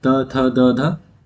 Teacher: वे व्यंजन जो जीभ की नोक द्वारा ऊपर के दांतों को स्पर्श करने पर उच्चारित होते हैं दंत व्यंजन कहलाते हैं।